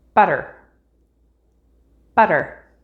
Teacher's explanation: one flap sound which is only used between vowels when the second syllable is unstressed butter butter that little T sound in the middle or D